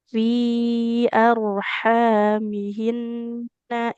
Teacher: Roknya tebal ya karena sukun didahului fathah.